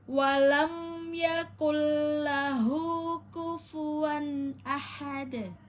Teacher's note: Kembali lagi pada dal yang kita wakofkan, maka dal domahnya kita matikan, maka terdengar atau terpantul membacanya qalqalah kubro